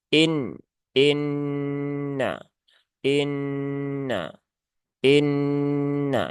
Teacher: Nun yang bertasdid, dia gunnah musyaddadah, ya, gunnah yang karena sebab ada tasdid, ya, maka nunnya ditahan dulu, ya. Ditahan dulu 3 harokat, ya. Jangan tergesa-gesa, tunaikan gunnahnya, ya, tunaikan taronumnya.